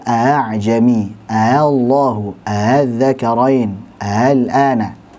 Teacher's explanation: A, I, U itu namanya hamzah tahqiq. Adapun hamzah yang tashil dibaca dengan ringan suaranya antara hamzah dan juga huruf mad.